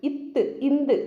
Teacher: இந்த நாக்கோட நுனி மேல்வாய் பல்லினோட அடி, மேல்வாய் பல்லு இருக்கு இல்லைங்களா, அதோட அடியை போய் வருடும். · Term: நாவின் நுனி மேல்வாய் பல்லின் அடி